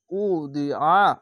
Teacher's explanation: এখানে ঈদগামে বা গুন্না হবে বাইতিউ উদিআ, ওয়াও পেশ উ, দদ জের দি, উদি, আইন যাবার আ, উদিআ, আইনটিকে মোটা করে গলা চিপে পড়বেন